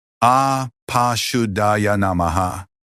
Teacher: Apa is pronounced with both A sounds as in father. Shuddhaya has the shy as in shine, the U as in put, and the Da with a soft D, followed by aspirated H.